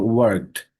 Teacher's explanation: এখানে ঠায়ের মতো ওয়ার্কড, not ড